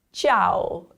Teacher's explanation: the I is slightly pronounced, and then the AO sounds like ow